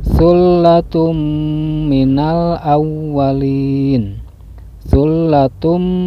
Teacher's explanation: idgham bi gunnah sebab tanwin dhamma menghadapi huruf mim lalu bacaannya didengungkan